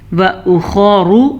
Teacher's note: را کو پر پڑھیں گے، خا کو بھی پر پڑھیں گے